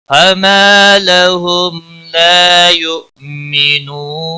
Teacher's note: واو مدہ ہے 1 الف کے برابر کھینچ کر پڑھیں گے نون وقف کی صورت میں ساکن پڑھا جائے گا 3 سے 5 الف کے برابر کھینچ کر وقف کریں گے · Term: وقف بالاسکان